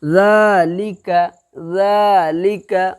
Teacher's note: ذال کھڑا زبر، یہاں پر الف مدہ کے طرح کھینچا جائے گا، کیوں؟ اس لیے کہ کھڑا زبر ہے، دال کے اوپر پڑھنے میں اس کے الف مدہ کے برابر ہوتا ہے کھڑا زبر، اسی لیے ذالک، ذالک، اوکے۔